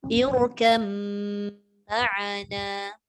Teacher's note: Jadi kita kena baca irkam ma'ana. Masuk mim, dengung dulu baru jalan.